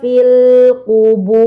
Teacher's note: Roknya menjadi tebal ya. Karena ini sebelumnya terdapat harokat dhammah.